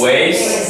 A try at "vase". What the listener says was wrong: No, not way. You're saying waste. Vase.